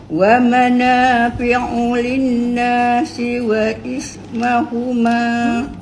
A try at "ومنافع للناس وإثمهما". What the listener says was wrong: Tak jadi makcik linnas tu makcik kena dengar dua harakat, kemudian bukan wa ithmahuma wa ithmuhuma.